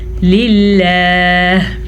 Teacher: یہاں پہ لفظ اللہ کے ساتھ ہمارے پاس نیچے زیر ملی ہے تو ہم لفظ اللہ کو باریک پڑھیں گے اور وقف کی وجہ سے ہا کو ساکن کر دیں گے. ہم پڑھیں گے للہ.